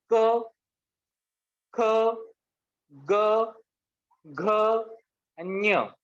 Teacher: आपल्या हाताला हवेचा स्पर्श होत नाही। तर ख चा उच्चार करताना हवा जी आहे ती आपल्या हाताला स्पर्श होते।